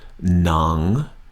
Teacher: on the second half of the word I tighten my throat up just a little bit